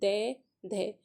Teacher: जो हमारी टंग है वो हमारी टीथ से टच कर रही है, तो ये तालु नहीं है